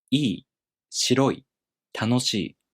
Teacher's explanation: in the downstep-type i-adjectives, the accent falls on the second to the last mora. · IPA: [iꜜi] [shiroꜜi] [tanoshiꜜi]